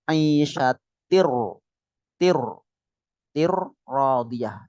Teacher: Ini idgham. Tinnya hilang bukan isyatin radiyah tapi langsung masuk ke ra karena idgham itu masuk